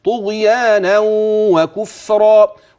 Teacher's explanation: الادغام وفي غنه واقعه بين كلمه طغيان وبين كلمه كفرا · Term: الإدغام